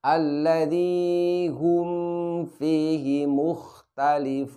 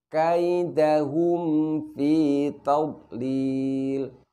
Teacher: Jadi ketika mim sukun bertemu dengan fa, maka rapatkan terlebih dahulu kedua bibir kita. Jangan sampai ketika kita mengucapkan mim, bibir kita ini kurang rapat sehingga bunyi mim sukunnya akan terdengar menjadi samar.